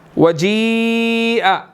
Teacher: تو یہاں پر دیکھتے ہیں وَجِيءَ، جی یا کے اوپر بڑی مد ہے، یہاں پر ہم نے اس کو 4 to 5 سیکنڈ جو ہے وہ ہم نے لمبا کرنا ہے